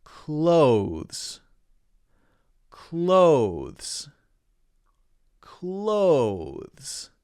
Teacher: one is the z sound okay so clothes clothes clothes so notice that my tongue goes out between my teeth and then comes back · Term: voiced th